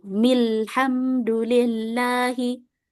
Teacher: kalau pada alif lam seperti ini di pertengahan, maka hamzah wasalnya tidak dibaca. Kita langsung masuk ke huruf lam.